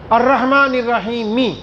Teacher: میم کی زیر ہے اور اس پر وقف آیا تو زیر والے حرف کو بھی ساکن کر دیں گے